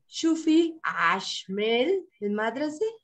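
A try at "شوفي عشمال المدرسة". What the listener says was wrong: Okay, with a liaison. We will say ashmel lil. There is a lil here and a lil here. Together we will pronounce them lil.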